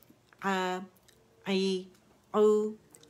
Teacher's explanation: आवाज़ जो ऊपर की तरफ जा रही है, फतह में कसरा में नीचे जा रही है, दम्मा में गोल हो रही है आवाज़ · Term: हरकत